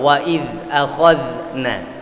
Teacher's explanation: وَإِذْ أَخَذْنَا مِيثَاقَكُمْ وَرَفَعْنَا فَوْقَكُمُ الطُّورَ وَإِذْ أَخَذْنَا dzal sukun 2 وَإِذْ أَخَذْنَا. Saya tidak baca dengan memantulkan dzal yang bersukun atau yang mati, sehingga saya harapkan bacaan para jamaah juga tidak memantulkan huruf dzal yang sukun.